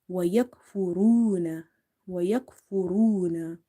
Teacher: So here we have stretched because waw is madda and ra is heavy because of having dhamma on top of it. Remember, ra is not from the musta'aliya letters, but we read it sometimes heavy, sometimes light, based on the situation.